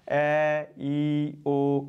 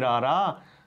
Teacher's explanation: ਐ, ਈ, ਓ, ਇਹਨਾਂ ਨੂੰ ਉਚਾਰਨ ਵੇਲੇ ਤਾਂ ਸਾਡੇ ਉਚਾਰਨ ਅੰਗਾਂ ਨੇ ਰੋਕ ਨਹੀਂ ਪਾਈ, ਪਰ ਜਦੋਂ ਅਸੀਂ ਬੋਲਾਂਗੇ ਰਾਰਾ ਤਾਂ ਉਦੋਂ ਸਾਡੇ ਉਚਾਰਨ ਅੰਗ ਰੋਕ ਪਾਉਣਗੇ। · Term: ਸਵਰ ਧੁਨੀਆਂ